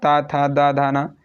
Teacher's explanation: ये सारे के सारे क्या है, दंत से इनका उच्चारण स्थान होता है